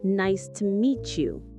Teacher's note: The T in meet you sounds like ch.